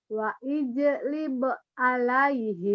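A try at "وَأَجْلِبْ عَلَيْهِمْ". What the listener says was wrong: Bukan wa'i tapi wa'a, barisnya di atas. Tenang ya. Wa ajlib. Wa ajlib alaihim.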